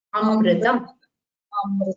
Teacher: You remember that we have to pronounce the Rikara like the R in crystal. Not as Ru, not as Ri. It has to be pronounced as something in between R.